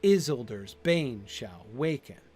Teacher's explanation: if you put the stress on the is at the beginning, then it's exactly the same line with just the added syllable, unstressed syllable at the beginning